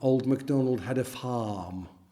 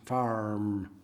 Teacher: the English people don't pronounce R's